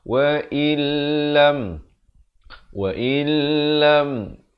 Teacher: kita baca dengan masuk tanpa dengung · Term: idgham bila gunnah